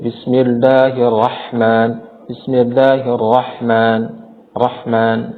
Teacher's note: huruf haknya tidak dibaca sesuai dengan makhraj dan sifatnya, sehingga huruf hak terdengar seperti hak atau bahkan terdengar seperti kha